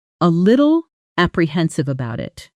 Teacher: A little apprehensive about it becomes something closer to a little apprehensive. Doubt it, with the T in little softening into a quick tap sound, almost like a D, and about it compressing into bout it, dropping the initial vowel almost entirely.